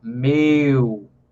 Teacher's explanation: Pode perceber, se você pronunciar a palavra meu, então pode ver que o som do E para o U tem uma caída na altura do som, né? Ó, meu. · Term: ditongos decrescentes